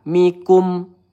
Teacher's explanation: mim sukun. Ini sifatnya tawasud ya. Mikum. Kita alirkan sedikit ya. Tidak boleh tertahan.